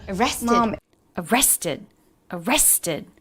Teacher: Da, da, da. Stress on the middle syllable, arrested.